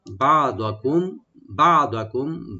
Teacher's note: মিম সাকিন এখানে আমরা জাহার করবো, এখানে গুণনা হবে না